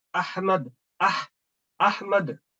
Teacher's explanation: یہ ہا middle of the throat ادا ہوتا ہے